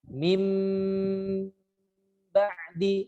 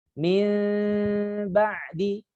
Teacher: Nun yang tadinya dibaca dengan dimasukkan ke ba, akhirnya menjadi suara mim juga. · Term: iklab